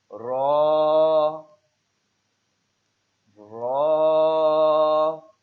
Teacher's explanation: اگلے دانتوں کے مسوڑوں سے اور اس کا کچھ تعلق زبان کی پشت سے بھی ہے جو نوک سے ذرا آگے چل کر ہے۔